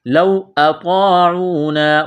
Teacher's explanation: واولین ہے کھینچنا نہیں ہے